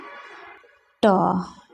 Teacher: ट बोलते हैं तो जीव हमारा कहाँ सटता है? तालु में, यानी कि मूर्धा में।